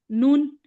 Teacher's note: जबान को आगे के दो दांतों के जड़ से लगाते हैं तो नून अदा होता है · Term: नून का मखरज